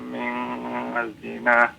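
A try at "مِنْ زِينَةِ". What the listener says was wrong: Min zinah, panjangkan 2 harokat ya.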